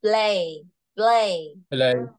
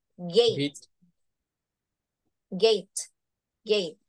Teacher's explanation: thì chữ âm e thì sẽ được phát âm dài hơn và lớn hơn cái âm i